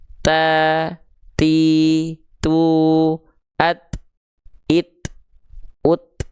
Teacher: Ketika kita tempel terus kita lepas keluar percikan nafasnya.